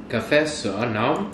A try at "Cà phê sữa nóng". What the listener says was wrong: Đúng rồi, cà phê sữa nóng. Anh đọc lại nha.